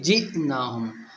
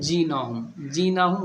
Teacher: جیناہم، جیناہم غلط ہے، یہ حمزہ ہے۔ جب حمزہ کے اوپر جزم لگے گا تو حمزہ ساکن ہو جائے گا، اور حمزہ ساکن جھٹکے سے پڑھا جاتا ہے